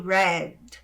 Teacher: E aqui nós temos o ênfase na letra D, que é seco, ele é mudo